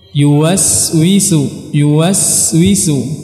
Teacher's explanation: jadi suara tidak boleh terputus ini namanya sifat rakhawah · huruf sin dia punya sifat yang dinamakan dengan rakhawah, mengalir. Jadi kita harus mengalirkan suara kita saat kita mengucapkan huruf sin.